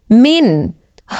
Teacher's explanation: সেকেন্ডের পরে ইজহারের 6 হরফের একটি হরফ খ আসছে এই কারণে এই নুন সেকেন্ডকে গুন্নাহ ছাড়া স্পষ্ট করিয়া পড়ব